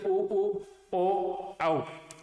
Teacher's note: उच्चारण करने पर मुख होठ है वो गोल हो जाते हैं होठों की आकृति गोल हो जाती है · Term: वृत्ताकार